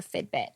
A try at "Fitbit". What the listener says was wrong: Are you saying Fitbit? It's a Fitbit. It sounds like you're saying F-I-D. Fitbit. Sounds like you're saying Fitbit.